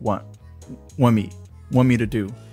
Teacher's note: you drop the T in want